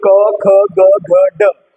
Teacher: क वर्ग वालों को बोलने में जो है कंठ का प्रयोग होता है, कंठीय व्यंजन भी इनको कहा जाता है।